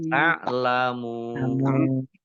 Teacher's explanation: Dibaca panjang boleh 6, boleh 4, boleh 2 harokat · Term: mat arif lis sukun